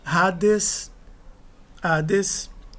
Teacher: Reparem que o iota não é pronunciado. Apesar de ele estar adescrito, ele só está descrito porque o alfa é maiúsculo.